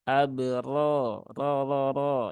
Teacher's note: itu ada Ro ada fathah ee ada Alif setelah fathah dan ro nya berbaris fathah maka rnya dibaca dengan tafkhim ya atau tebal